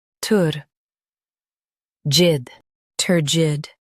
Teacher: Emphasize tur and soften jid.